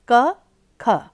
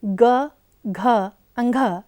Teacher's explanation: प्रत्येक वर्ग की ध्वनियों में पहले अघोष तथा बाद में घोष या सघोष ध्वनियों की व्यवस्था है। पहली दो ध्वनियाँ अघोष जैसे क, ख तथा अंतिम तीन ध्वनियाँ जैसे ग, घ, अंघ घोष हैं